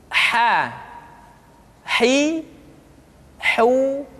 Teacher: huruf H dikeluarkan dari tengah-tengah tenggorokan di tengah-tengah tenggorokan hi ha hi how Mbah Hai kesalahan yang